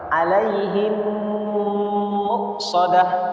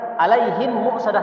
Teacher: didengungkan huruf mimnya tidak boleh kita baca izhar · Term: idgam Mimi